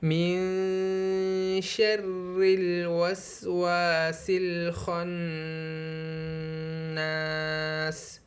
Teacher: یہاں پر نون ساکن کے بعد حرف اخفا میں سے شین آیا ہے، تو اس میں ہم اخفا کریں گے